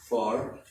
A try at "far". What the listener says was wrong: But this one, it needs to be a little like more resonant. So instead of far, you say far. You see this deep sound, this resonant sound, you say far.